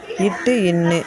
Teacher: நாவின் நுனி அன்னத்தின் நுனியை பொருத்துவதால் பிறக்கும் எழுத்துக்கள்